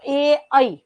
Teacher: બે વસ્તુ નથી, એક કંઠ અને બીજું તાળવું, એટલે એને કહેવાય કંઠમાંથી અને તાળવામાંથી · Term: કંઠ અને તાળવામાંથી, કંઠ અને તાળવા માંથી